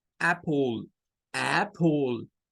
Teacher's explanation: Es la mezcla entre una A y una E. Se llama el sonido corto para la A. Short A es el nombre que recibe y es I, como decir A y después E, pero en una sola, I.